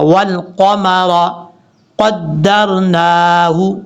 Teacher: قاف حروف مستعلیہ میں سے پر پڑھا جائے گا